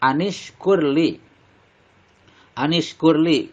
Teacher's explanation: kur ro-nya dibaca tebal karena atau dibaca tafhim karena ro berharokat sukun sebelumnya doma.